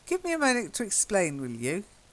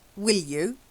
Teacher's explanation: it's like the stress is on the you